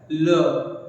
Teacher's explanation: क्यों बोलते हैं भाई, ध्यान दीजिएगा, जब आप ल बोलते हो ल, तो उसमें आप करते क्या है, अपनी जिह्वा को आप मोड़ते हैं और बगल बगल से दोनों तरफ से हवा बाहर आता है ल। आप जिह्वा को मोड़ने के बाद बगल बगल से जब हवा आता है तो आप बोल पाते हो ल, जो कि हमारा क्या है, पार्श्व व्यंजन।